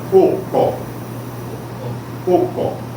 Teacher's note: Ela tem o que seria um acento agudo no segundo O e um oclusivo no primeiro O. E a pronúncia fica ocó.